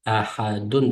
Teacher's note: Dun turishda sukun o'qildi to'xtagan vaqtimizda. Agar to'xtamay o'qib qolsa, uni ahadun deb o'qiymiz.